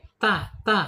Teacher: ujung lidah menyentuh pangkal gigi seri